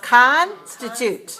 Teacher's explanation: you have constituted three syllables and it's stress on the first